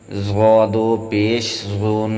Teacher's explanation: ضا دو پیش ظن پر ہم نے غنہ بھی کیا ہے اور ضا کو موٹا کیا ہے